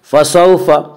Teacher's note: واولین وہ واو جو ساکن ہو اور اس سے پہلے زبر ہو، واولین کو نرم آواز کے ساتھ پڑھیں گے